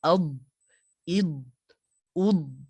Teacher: untuk huruf dad ini dia tidak ada qalqalah. Dia tidak ada lantunan, tiada pantulan suara.